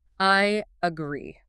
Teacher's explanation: The stress, or, the power of the word, is on the second syllable. The second part.